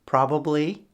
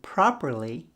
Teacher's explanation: b has a voiced sound and you can feel the vibrations in your neck.